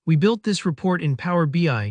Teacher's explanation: Notice how that pause just before BI helps the listener instantly recognize the product you're talking about.